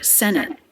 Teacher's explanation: this T is a stop T. She doesn't release the escape of air. Senate. It's an abrupt stop of air.